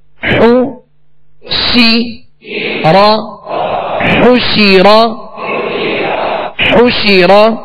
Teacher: شین کے نیچے زیر ہے، آواز کو گرا کر، اور زبر را پر ہے تو آواز اور منہ دونوں کھول کر اس کو ادا کریں